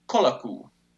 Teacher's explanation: And finally, the or, the final r is lost, making the final o long, so it raises to u.